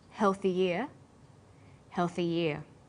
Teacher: For example, healthy ear sounds the same as healthy ear. When healthy is linked together with ear, a y sound is added. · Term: y linking sound